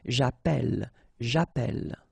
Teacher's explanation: double L like that, it will affect the pronunciation of the e. So actually it will open the sound, and that's the reason why you will get the sound e, okay?